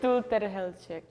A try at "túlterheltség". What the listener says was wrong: Okay, at the end, remember that it's a long E. Shake. Sh instead of s, sh.